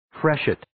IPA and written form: 'freʃɪt (Freshet)